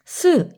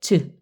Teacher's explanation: 그런데 즈를 발음할 때 잠깐 멈춰요. 스 이건 나오는데 즈 이거는 공기의 흐름을 잠깐 막아요. 그래서 파열되는 성질과 마찰의 성질이 모두 있다는 거죠. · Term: 파찰음